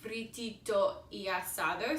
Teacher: So in Spanish, when you're singing and really when you're talking as well, all of the consonants, in Spanish, when you're singing or speaking, the vowels run together. So if one word ends in a vowel and the next one starts with a vowel, they just kind of merge.